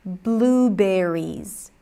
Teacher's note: make sure it's a high e raise the tongue make it a little longer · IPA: [i]